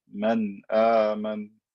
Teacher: This is wrong because the hamza is far away. There's no reason to add extra ghunna. Just say the noon clearly.